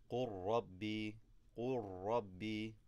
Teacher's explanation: So we drop the lam and double up on the ra. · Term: idgham